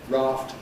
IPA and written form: rɑːft (raft)